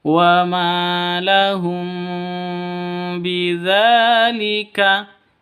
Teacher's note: mim mati bertemu dengan ba Ikhfa Syafawi samar ya ikhfa sfawi bacanya samar didengungkan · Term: ikhfa safawi